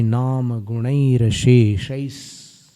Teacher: उच्चारण में स का उच्चारण पूर्व वर्ण में हो जा रहा है।